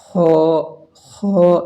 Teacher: اس کو موٹی آواز سے پڑھیں گے کیونکہ حروف مستعلیہ میں سے ہے